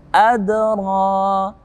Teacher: Adra qalqalah sughra, karena dia berada pada tengah-tengah ayat atau di awal kalimat. Pantulannya daripada qalqalah di sini lebih ringan, makanya namanya qalqalah sughra